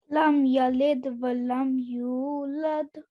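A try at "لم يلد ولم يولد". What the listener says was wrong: Excellent, good, well done.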